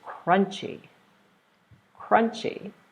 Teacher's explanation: 2 syllables, we're stressing the first one.